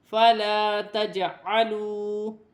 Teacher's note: جیم ساکن ہے، حرف قلقلہ میں سے ہے، قلقلے کے ساتھ ادا کیا جائے گا